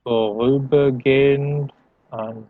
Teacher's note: Remember not to pronounce that H as an H.